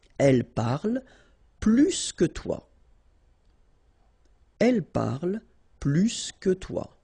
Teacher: plus will be with the S. So pronounce it plus que